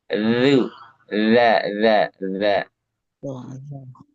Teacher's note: Ujung lidah di sini. Nah, ujung lidah dia tempel ke ujung di atas